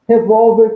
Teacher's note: a sílaba tônica de revólver é a penúltima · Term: paroxítona